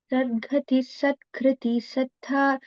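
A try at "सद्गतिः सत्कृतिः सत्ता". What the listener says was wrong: In the first line, Sadgatihi, it is not Sadgatihi, it is, there is no Mahaprana there. Sadgatis, Satkritis, Satta, all are Alpa Pranas.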